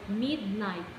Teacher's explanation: the syllable mid, it is being stressed, and the night, the syllable night, is not being stressed